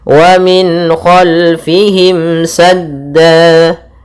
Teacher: suara nunnya dibaca jelas dan datang setelahnya huruf-huruf halq, yaitu huruf yang kita keluarkan dari tenggorokan kita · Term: izhar halqi